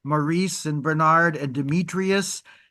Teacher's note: the stress pattern is that in American culture, most of the male names which are stressed on the second syllable in American English